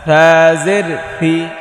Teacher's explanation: জিব্বার আগা সামনের ওপরের দুই দাঁতের আগায় লাগিয়ে থা, নরম থা